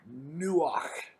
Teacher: we don't have this word in you know pronunciation in english it's a hard ch almost a k sound where we almost spit that word out you know like from the back of the throat